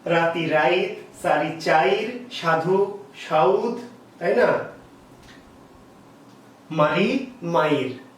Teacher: অর্থাৎ যেটা সবই একই রকম আছে, একই বর্ণগুলো আছে, কিন্তু তারা কি করছে, একটা কার ছিল ইকার বা উকার, তারা যে পিছনে উচ্চারিত হওয়ার কথা, সেই পিছনে উচ্চারিত না হয়ে তারা কি করছে, উচ্চারণটা আগে করে নিচ্ছে। অর্থাৎ পরের ইকার বা উকার পরের থেকে একটু সামনে চলে আসছে। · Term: অপিনিহিতি